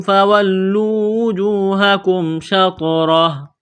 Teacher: طوا پر قلقلہ کریں گے، طوا ساکن ہے، را کو موٹا کرنا ہے زبر کی وجہ سے، جب یہاں پر وقف کریں گے تو ہا کو ساکن کریں گے۔